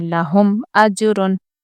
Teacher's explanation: میم کو ظاہر کریں گے، یعنی کہ یہاں پر ہم غنہ نہیں کریں گے. لہم ایسے رکیں گے نہیں بلکہ جلدی پڑھیں گے.